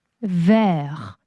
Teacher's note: R까지 vert 혓바닥 뒤로 휘가닥 넘어가야 되죠? vert 그렇죠. 마지막 T 발음 하지 않습니다.